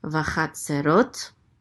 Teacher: Accent on the last syllable